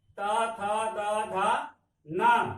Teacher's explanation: अब देखिए कहां से निकल रहा है? त बोल रहे हैं तो जीभ दांत से सट रहा है, तो ये आपका दंत ध्वनि हुआ।